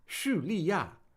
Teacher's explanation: three fourth tones in a row